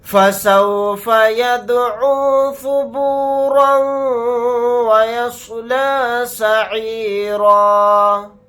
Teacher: یہاں پر سواد کو موٹا یعنی پر پڑھیں گے. پھر یہاں پر آیت کرنے کی صورت میں را الف کے ساتھ ایک زبر لگا کر پڑھیں گے, دو زبر نہیں پڑھے جائیں گے.